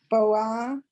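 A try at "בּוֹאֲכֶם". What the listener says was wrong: Line 5, the Aleph is silent. The Aleph has no sound at all.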